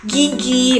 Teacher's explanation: ada ge itu termasuk ke bagian plosif yang bersuara.